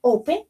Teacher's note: The stress is in the first syllable